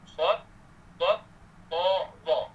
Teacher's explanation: huruf yang terangkat pangkal lidah lagi terangkat pertengahan daun lidah, yang angkat penuh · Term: huruf musta'liyah mutbaqah